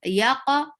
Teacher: Yaqa for qaf, give qalqala and make qaf heavy.